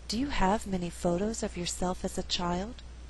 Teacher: Many is a content word, but because we had too many stressed syllables together, there's a better flow if many is not stressed. So the resulting rhythm is 1 and 2 and 3 and 4. Have, photos, yourself, child. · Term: alternate the stress